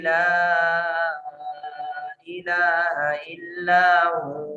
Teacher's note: अभी देखिए यहाँ मैंने वक्फ किया है इल्लाहू, चूंकि यहाँ सांस मुकम्मल हो रही थी, अब सांस के अंदर इतनी गुंजाइश नहीं थी कि अब अगला जो इसका हिस्सा है आयत का मैं वो पूरा कर पाता, तो मैंने यहाँ वक्फ करने की वजह से हुआ को हु पढ़ लिया